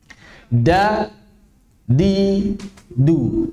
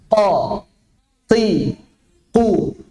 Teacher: Ketika kita mengucapkan jahr dan syiddahnya sekaligus, maka di sana sebetulnya ada qalqalah. Namun tidak terlalu tampak sebagaimana ketika sukun. Jadi pengamalannya sama, prakteknya sama, konsepnya yang beda.